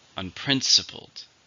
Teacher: four syllables stress is on the second